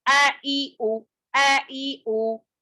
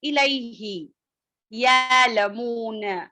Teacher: حمزہ کی آواز سخت اور جھٹکے والی ہوتی ہے